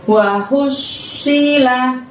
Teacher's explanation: Hu-nya yang lembut dari tenggorokan bagian tengah, lalu masukkan ke shot bertasydid di depannya dan ditahan, ditekan selama 2 harokat ya teman-teman.